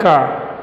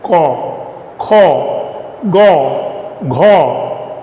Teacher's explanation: In Hindi we pronounce it as ka, but in Bengali we pronounce it as ko